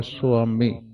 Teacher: ਇਹਨੂੰ ਸਵਾਮੀ ਨਹੀਂ ਕਹਿਣਾ ਵਵ ਅੱਧਾ ਹੈ ਅ ਪੜਨਾ